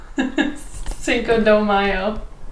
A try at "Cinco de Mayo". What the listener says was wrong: It's not dough, it's day.